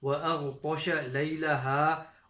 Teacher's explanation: Ghain is from the top of the throat. It's also a full mouth letter.